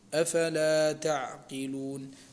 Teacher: دائما لابد أن نحافظ على الهمس في الفاء